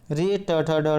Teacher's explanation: री और ट्वर्क के अंतर्गत जितने भी वर्ण आते हैं सभी मूर्धा से बोले जाते हैं, तो इनको जो ये मूर्धा वर्ण कहा जाता है।